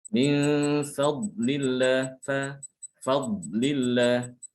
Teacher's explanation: huruf fa ini dia selalu tipis ya, tidak boleh ditebalkan. Sekalipun setelahnya itu ada huruf yang tebal.